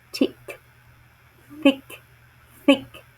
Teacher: The next one is the interdental sound, as in the word thick, thick, thick. That sound is produced with the tongue in between the upper and lower teeth